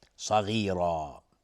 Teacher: صاد از حروف استعلاست و غین از حروف استعلاست و را هم حکمش استعلاست چون تنوین نصب روشه. صغیرا مد عوض، عوض از تنوین.